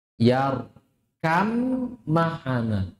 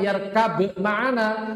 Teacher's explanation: Ba-nya masuk ke huruf mim dzatan wa sifatan. Secara dzat dan secara sifat.